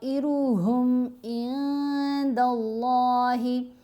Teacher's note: طا کو 5 حرکات کی مقدار لمبا کیا. نون کے اوپر احفا کریں گے, نون کی آواز کو ناک میں چھپا کر پڑھیں گے.